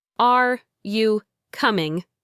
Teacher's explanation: Your voice goes up on the word coming. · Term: intonation